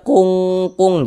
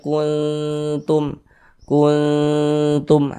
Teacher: bunyi nun sukunnya jangan dibaca kun berbunyi n sempurna · Nah, kalau ini kita baca kun, jangan dibaca kung, jangan, tapi dibaca kuntum. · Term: ikhfa hakiki aqrab, ikhfa hakiki akrob